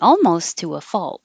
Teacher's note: And the vowel in fault is like fall. So I wrote it that way to help you remember that it's fall, and then a T that you don't release.